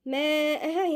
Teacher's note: المد ده متصل 4 حركات لأن الهمزة والمد جم في كلمة واحدة. ومر الراء هنا مفخمة.